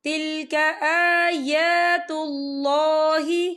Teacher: اللہ کا نام جو ہے پر پڑھا جائے گا کیونکہ اللہ کے نام سے پہلے پیش ہے